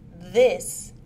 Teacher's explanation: made using the teeth and tongue it is a fricative sound and is voiced the vocal cords vibrate